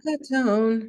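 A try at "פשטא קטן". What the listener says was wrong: You sang Munach Katon.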